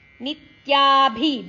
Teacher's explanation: ನಿತ್ಯಾಭಿ ಭಿ ಮಹಾಪ್ರಾಣಕ್ಷರ ರಸ್ವಾಕ್ಷರ